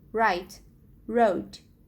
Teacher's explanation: They are sounds with the tongue curling back toward the back of the alveolar ridge. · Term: retroflex